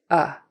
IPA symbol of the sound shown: ʌ